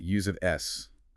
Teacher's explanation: We use the voiceless sharper S sound. Use an S. No vibration.